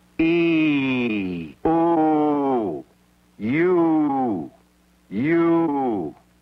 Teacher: In the word U, for example, the sound begins with the lips and jaw open and the tongue forward near the roof of the mouth, close to the position it would have for the sound e. A transition is made to a shape with the tongue humped further back and with the lips rounded in position for the sound [Music] o.